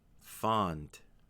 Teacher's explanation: have the word fond this is a one syllable stressed word because it's a stressed syllable you have to make sure to make the vowel extra long that way you can clearly hear the ending and so remember